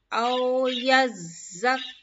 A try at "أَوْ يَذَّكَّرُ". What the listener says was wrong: Okay, this one is zal. This one is first one was za. Yazakka. Okay, but this one is zal. پتلی ہے. أو يذكر. زا. آپ کو یس آپ کو ٹانگ آپ کو اوپر کی دانتوں میں لگیں گے. ٹچ کریں گے. أو يذكر.